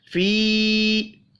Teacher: या के ऊपर छोटी मद है, 3 अलिफ के बराबर खींच कर पढ़ेंगे।